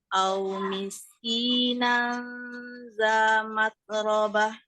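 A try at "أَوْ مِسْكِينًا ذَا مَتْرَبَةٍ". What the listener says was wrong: Kurang mat. Hamasnya kurang Mimnya agak tebal tadi.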